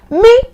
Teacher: When your voice gets that high like that, the tone is called me.